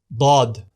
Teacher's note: The dad sounds like a heavier, more emphatic letter dal, or English letter D. Exit point, edges and sides of al-lisan, the tongue.